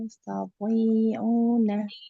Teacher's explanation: Nah, to-nya ditebalkan, kemudian panjang dua harokat.